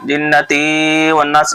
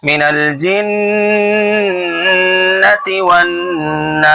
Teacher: جنتی کی تا کو کھینچیں گے نہیں بلکہ جلدی پڑھیں گے